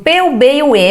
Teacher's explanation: os sons desses fonemas né dessas letras eh são produzidos com os meus dois lábios então a gente chama eles de anteriores porque eles acontecem na